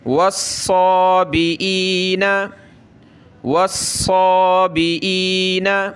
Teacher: صاد پہ یہ تشدید بھی ہے تو سخت کرنا ہے صاد کو، اور کھڑا زبر ایک الف کی لمٹ میں کھینچیں گے۔